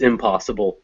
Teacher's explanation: The impossible is stressed on the pos part.